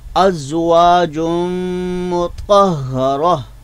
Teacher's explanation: तो लिहाजा नून तनवीन का जो था वो हमने मीम में पूरी तरह मिला दिया है। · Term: इदगाम